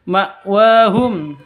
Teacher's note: wa panjang dua ketuk ada tanda berdiri di atasnya